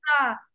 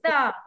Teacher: Kenakan hujung lidah pada gigi tu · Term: makhraj